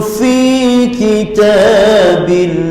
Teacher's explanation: hujung gigi kacip atas hampir bertemu dengan perut bibir bawah, huruf fa